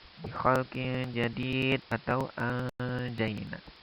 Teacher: nun sukun bertemu dengan jim dihukumi ikhfa, maka cara bacanya samar-samar